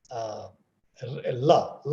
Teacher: So lateral approximant is la sound. Of la sound in English is known as lateral approximant.